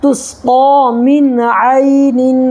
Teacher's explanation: جیسے تسقا من عین، یہاں دیکھیے یا ساکن ہے، یا ساکن سے پہلے عین کے اوپر زبر ہے تو یا لین ہوگا، اس کو نرمی کے ساتھ ادا کریں گے